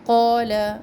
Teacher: قال الف مدہ دھیان رکھے اور لام کا زبر لمبا نہ کرے